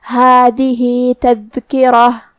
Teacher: جو کہ را پہ زبر ہے تو را کا حکم ہے تفخیم. ہمیں را کو موٹی آواز میں ادا کرنا ہے